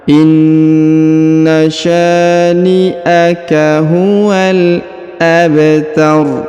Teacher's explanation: Kita sukunkan di ujungnya ya, karena kita berhenti bacaan di sini atau ini sudah di ujung bacaan ya. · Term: berharokat sukun